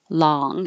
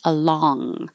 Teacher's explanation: This vowel is ah, long, and the back is making the NG